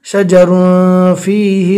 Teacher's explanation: تنوین کو ناک میں چھپا کر پڑھیں گے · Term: اخفاء